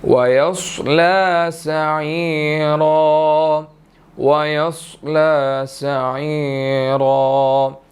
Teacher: स्वाद यहाँ पर मोटा अदा किया जाएगा